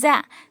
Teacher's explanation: ज़ुबान की जो कोनी होती है उसको नीचे के 2 दांतों के जड़ में नीचे लगाना, नीचे के 2 दांतों के जड़ में लगाने से ज़ा अदा होता है। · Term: हुरूफ़े सफ़ीर